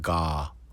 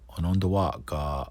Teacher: there's a glottal stop at the end, so it's not ga